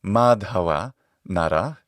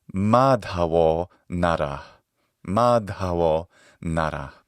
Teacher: that ancient ah sound, when it's in front of a voiced consonant in sandhi, becomes o, the long o sound.